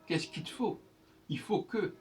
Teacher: le L de il, c'est du moment qu'il n'est pas suivi d'un E, il n'est pas censé s'entendre le L.